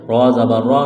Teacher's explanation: را کے اوپر زبر ہے، را کو موٹا کرنا ہے